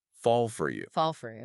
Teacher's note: the L sound in fall slides right into the F sound in for. It sounds like one word. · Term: connected speech